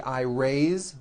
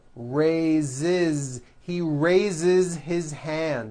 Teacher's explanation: even though it is spelled with an S it's pronounced with a voice Z raise so we say I raise with a voiced Z ending